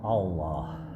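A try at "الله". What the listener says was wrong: Nah, masih salah karena huruf alif terseret ke dalam huruf lam. Jadinya Allah. Salah. Bacanya adalah Allah. Tetap A bacanya ya. Ingat ketika kita fathah janjinya adalah setiap fathah harus terbuka.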